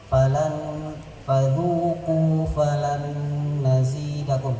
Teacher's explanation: Falan nun sukun bertemu nun itu ada idgham bi gunnah.